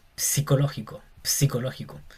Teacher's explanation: PSI como de psicológico, pero se pronuncia más la p